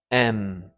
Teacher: And the air is going through your nose